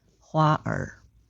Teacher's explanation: Second, do not pronounce as a separate syllable after the word. The tongue curls slightly upward while you are still producing the main vowel. It is not vowel first then it is one fused sound.